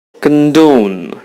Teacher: You have the stress on the second syllable. It means the second syllable would sound louder than the other one.